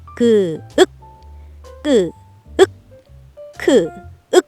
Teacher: 이런 훌륭한 한글의 특성을 알고 받침으로 사용되는 자음들을 더 살펴보면 그와 소리내는 방법이 닮은 끄 그와 같은 입모양으로 말하면서 혀의 힘을 아주 많이 주어서 소리내는 끄 그와 같은 입모양으로 말하면서 거에게 바람이 튀어나오게 소리내는 크 그 그 끄 크 모두 같은 입모양으로 말하는 자음 그래서 끝소리가 모두 같아요